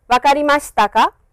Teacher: An interrogative sentence is formed by adding particle ‘ka’ at the end of a sentence with a rising intonation.